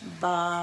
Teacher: बा दोनों होठों को मिलाने से अदा होता है दोनों होठों के अंदरूनी हिस्से यानी तरता हिस्सा बा इजली आप